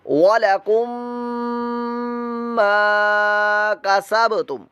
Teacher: وَلَكُمْ مَا کسبتم, کاف متحرک ہے, سین بھی متحرک ہے, با ساکن ہے اور با ساکن حروف قلقلہ میں سے ہے, لہذا یہاں پر ہم قلقلہ کی ادائیگی کریں گے